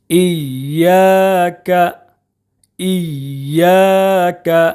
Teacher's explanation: یا میں ایک الف کے برابر کھینچ کر پڑھیں گے اس لیے کہ الف مدہ ہے